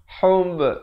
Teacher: dan diberikan lantunan kerana ba merupakan huruf qalqalah di sini